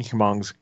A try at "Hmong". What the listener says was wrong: You don't pronounce the H at all.